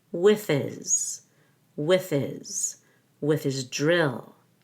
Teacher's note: the s in his sounds like a z · Make sure that DR is a JR.